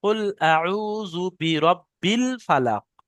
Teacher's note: কুল আউযু বিরাব্বিন আপনার হয়ে গিয়েছে, বা নিচে তানবিন নেই, শুধু জের আছে। বাটা গিয়ে লামের সাথে যোগ হবে, বিল।